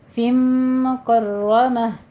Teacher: فم میں ادغام الغنہ کرنا ہے، 2 کاؤنٹ کرنے ہیں، مکرمہ میں را مفخم ہے، پر پڑیں گے اور آخر پہ تا کو ہا سے بدل دیں گے۔